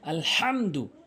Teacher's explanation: এখানে হালকের মাঝখান থেকে হা বলতে হবে